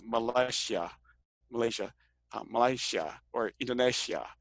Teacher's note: And so like this, this one that looks like a C with a curl at the bottom is actually this S or SH sound with the tongue in the Y position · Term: post alveolar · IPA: ɕː